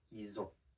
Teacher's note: Ils ont would become ils ont. So you can see in this case we don't pronounce the L either.